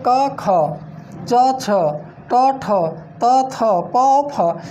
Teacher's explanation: इन वर्णों के उच्चारण में बताया गया कि यहाँ पर कंपन और झंकार उत्पन्न नहीं होता है। जब कंपन और झंकार नहीं होता है उन्हें हम अघोष वर्ण कहते हैं।